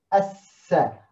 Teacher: der Sin, der dazu geführt hat, dass Lam verschwindet, als hätten wir in die Sonne geschaut und die Sonne blendet uns und da sehen wir den Buchstaben nicht. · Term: Sonnenbuchstabe